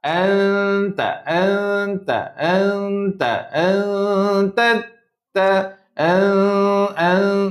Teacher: Nampak tak lidah tu nak sebut ta. Tapi dia samarkan nun dulu. Itu nama dia samar. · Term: Ikhfa